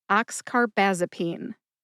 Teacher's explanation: All right, you put all five syllables together and you get oxcarbazipene. Emphasize ox and baz. Baz gets the most emphasis.